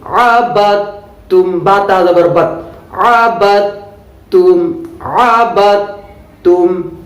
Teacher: دال کو تا میں ادغام کر دیتے ہیں اور اس کو تا بنا دیتے ہیں